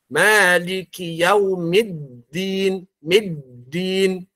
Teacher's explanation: dal ini bukan termasuk huruf hamas, dia termasuk kepada jahar. Ya, dan juga masuk kepada huruf syiddah.